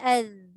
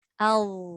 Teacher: Sebenarnya yang menyebabkan bunyi tu jadi tebal adalah pangkal lidah kita yang diangkat ke atas. Hujung lidah ni dah keluar kat gigi depan dah.